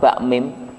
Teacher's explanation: ini adalah dua huruf yang sama-sama berasal dari bibir, asyafatain. Tetapi dua huruf ini mempunyai sifat yang berbeda.